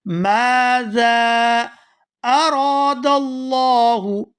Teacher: یہاں را کو کھینچ کر ادا کریں گے کیونکہ اس کے ساتھ الف مدہ ہے، اور آگے لفظ اللہ کے لام کو پورا ادا کیا جائے گا کیونکہ اس سے پہلے زبر ہے۔